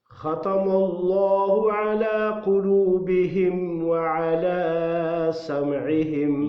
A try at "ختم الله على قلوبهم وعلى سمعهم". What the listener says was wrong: لمبا نہیں، ایک الف کی مقدار. یہ کھلا زبر مد نہیں ہے. بس. وعلی سم، اس کو لمبا کرنا، اس کے اوپر مد ہے. اس کو لمبا نہیں کرنا.